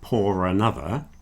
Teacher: if I then follow it with another vowel, that R will reintroduce itself